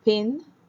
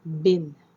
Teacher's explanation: plosive or stops, voiceless P, voice B, bilabial, which is the place of the articulation